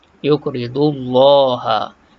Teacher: Kalimah Allah, lam dibaca dengan tebal.